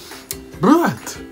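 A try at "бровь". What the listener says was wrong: Bruv. Not brat. Brat in Russian means brother. Bruv.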